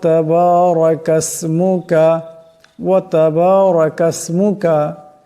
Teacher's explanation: করা যাবে না সুবহানাকা আল্লাহুম্মা ওয়াবিহামদিকা তাবারাকাসমুকা তাবারাকাসমুকা এখানে রাবর আছে রাকে মোটা আওয়াজে পড়তে হবে